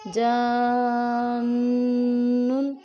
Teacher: इसी तरीके से देखिए अलिफ मद्दा है और अलिफ मद्दा के बाद क्या है, अगले हर्फ पर तशदीद है, दौलन जन्नुन, यानी कि यहाँ पर हमने गुन्ना भी करना है, आवाज़ को नाक में भी लेके जाना है, और यहाँ पर हमने इसको 5 से 6 उंगली के बराबर लंबा करना है।